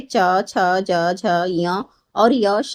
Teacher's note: तालव्य से जो है च वर्ग बोला जाता है,